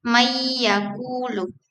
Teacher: nun sukun atau tanwin diintegrasikan atau dilebur menjadi huruf berikutnya sehingga nun tidak terdengar lagi. Secara fonetis, ini menyebabkan hilangnya suara nun dan transisi yang lebih lancar menuju konsonan berikutnya. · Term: idgham